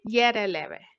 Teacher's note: जब हम बोलते हैं तो जीभ मुख के किसी भी भाग को नहीं छूती है, स्पर्श नहीं करती है। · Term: अंतस्थ